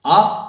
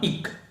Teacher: ஆ என்று ஒலிக்கக்கூடிய ஓசையில் பாதி அளவுதான் இக் என்பது